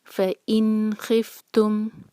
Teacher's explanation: اس کے بعد ہے فَإِن خِفْتُمْ، یہاں پر بھی نون کو کلیئر پڑھیں گے، فَإِن خِفْتُمْ۔ ہم نے نون پر غنہ نہیں کرنا ہے